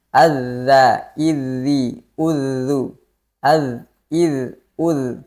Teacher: rokhawah atau mengalirnya suara ketika dalam keadaan sukun atau bertasydid